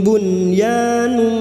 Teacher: sekarang nun sukun bertemu ya, masih sama tentang idhar wajib atau idhar mutlak yang dibaca jelas tanpa mendengung